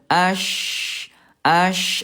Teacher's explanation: huruf syin dia tengah lidahnya hanya dinaikin saja. Dinaikin aja tanpa ditekan seperti jim · Ini ada furjah ada rongga ayah bunda untuk menyempurnakan sifat huruf namanya rakhawah lemah mengalir.